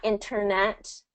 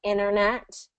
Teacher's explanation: there is a situation where the T becomes silent in some specific words like international and internet.